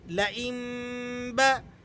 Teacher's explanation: نون کی آواز کو میم کی آواز سے چینج کر دیا گیا ہے۔ اس لیے ہم یہاں پڑھ رہے ہیں حمزہ میم زیر ام، لئم، با زبر با، لئم با۔ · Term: اقلاب